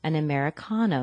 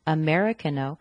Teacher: order an Americano with the stress on the con